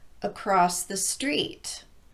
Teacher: We raise our pitch on street because that's the content word. But we emphasize the second syllable in across simply by elongating it a bit more than the first syllable.